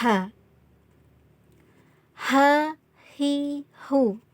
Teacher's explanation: jadi pengucapan huruf H ini dari tenggorokan bagian tengah